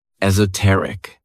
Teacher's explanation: and the stress is on that third syllable.